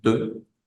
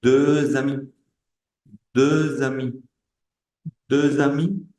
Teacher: Esa X, cuando por supuesto no suena, como lo están escuchando, de, pero cuando se hace liaison, cuando yo uno el sonido de esa última consonante con una vocal o una H muda de la palabra siguiente, esa X va a sonar como una S